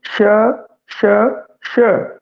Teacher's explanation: जीभ है जो तालुए नाल एवें टच कर रही है बई, छो रही है तालुए नू, इस कारण ये आवेगा तालवी दे अंदर बई, तालवी दे अंदर आएगा।